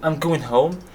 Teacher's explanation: It is a statement and we have a falling intonation